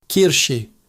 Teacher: The ch sound here is soft, coming from the back of your throat. Kirsche. And sh is like osh in English.